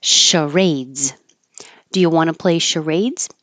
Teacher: This is a word from French, which is why the CH sounds like an SH.